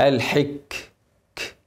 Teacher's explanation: الكاف عليها سكون لازم ابين الهمس عشان مش هتظهر